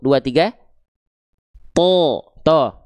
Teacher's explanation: Nah, pangkal lidahnya ini diangkat karena dia huruf yang tebal. Makanya ketika huruf th ya huruf th berharakat fathah kan karena dia tebal.